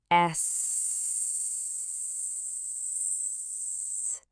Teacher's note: Notice that you shouldn't feel any movement. Your vocal motor is off. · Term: long S sound